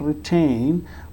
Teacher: it is being pronounced with a puff of air. So this is called aspirated t. Whenever it is aspirated it has to be in the beginning of a syllable.